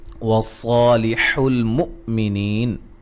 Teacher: صاد کو موٹا, حمزہ کو جھٹکے سے ادا کریں گے, نیہ مدہ ہے.